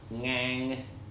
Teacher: tone is an even tone and it's important to remember that the vocal register is a little above the normal speaking register for English